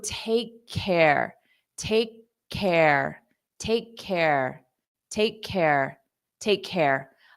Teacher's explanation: For pronunciation, it's not about spelling, it's about sound, So this is a K sound. So what we can do is we can just use one K for both of them.